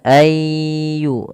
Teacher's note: Maka jangan sampai kita membacanya an yudkaroh tapi dia ayyu nunnya dianggap tidak ada.